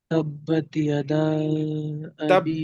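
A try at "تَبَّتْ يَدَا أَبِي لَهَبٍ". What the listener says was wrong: تبت پہ قلقلہ کیوں کر رہے ہیں آپ؟ ہاں قلقلہ ہو جاتا ہے وہ، یہی غلطی اکثر ہو جاتی ہے کیونکہ تا پہ قلقلہ ہوتا ہے، ٹھیک ہے، تا پہ نہیں.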